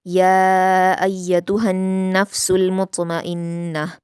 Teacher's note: नून पर तशदीद है तो इसको गुन्ना के साथ पढ़ेंगे और सीन को लाम से मिलाएंगे । मुत्मइन्नह में त्वा पर कलकला करेंगे और नून पर गुन्ना · या पर अलिफ मद्दा है यानी खड़ा ज़बर है और उसके बाद हमज़ा इसी कलीमे में है तो मद्दे मुत्तसिल हो रहा है, 5 हरकत के बराबर खींचेंगे या को